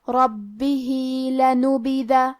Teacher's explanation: کلمت ربہ میں با پہ تشدید ہے، تو ہمیں یہ حرف کو 2 حرف کے برابر پڑھنا ہے